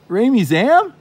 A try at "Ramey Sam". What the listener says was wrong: I thought you said Ramey Zam. I like Ramey Zam better. Ramey Sam's good. Ramey Zam is better.